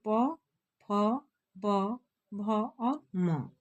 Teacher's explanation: दोनों ओठ के मिलने से इनका उच्चारण होता है या यह ध्वनियां निकलती है तो प वर्ग के अंतर्गत आते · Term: ओष्ठ